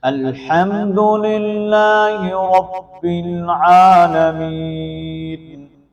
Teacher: الحمد میں لفظ ہا کو ہم نے بریک کرنا ہے، موٹا ہا نہیں کرنا · یا ساکن ما قبل زیر ہے تو یا مدہ ہونے کی وجہ سے اس کو بھی ایک الف کے مطابق ہم کھینچ کر پڑھیں گے · عالمین کے اندر عین کو ہم ایک الف کے مطابق کھینچ کر پڑھیں گے کیونکہ اس کے اوپر کھڑی زبر ہے اور کھڑی زبر الف مدہ کے قائم مقام ہوتی ہے۔ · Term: ہا کی بریک